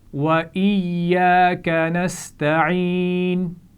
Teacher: ایاک ہم کھینچ کر کیوں پڑھ رہے ہیں؟ کیونکہ الف سے پہلے زبر ہے اور یا پر شد ہے تو اس کو ہم پیچھے سے ملا بھی رہے ہیں اور اس کی اپنی آواز بھی ادا کر رہے ہیں